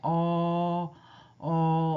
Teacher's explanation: 어도 어도 평순이고 뒤쪽에서 발음 나면서 이건 중간 정도 벌어집니다